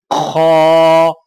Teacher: خو کی ادائیگی میں خرخراہٹ کی آواز پیدا نہ ہو، یعنی خو، اور یہ صحیح نہیں۔